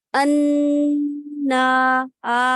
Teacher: ہم نے بغیر ناک کے باریک الف پڑھنا ہے. منہ کھولیں، کوشش کریں کہ آپ کی زبان ایسے نہ ہو.